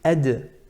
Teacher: There's a bit of wind that comes out from the mouth when we say at. And when we say ad is another light letter, and there's a qalqala there.